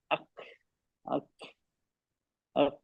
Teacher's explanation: जबान को कम उठाना, जिस वजह से काफ की आवाज कमजोर हो जाती है। अगर हमने जबान को कम उठाया और हल्का सा ना के बराबर लगाया तो आवाज अक, अक, अक, आवाज आ रही है?